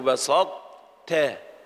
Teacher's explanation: فالطاء أدغمت في التاء ولكن بقي حجمها، فلا نقول بسطت ولا نقول بسطت، إنما نقول بسطت. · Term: إدغام ناقص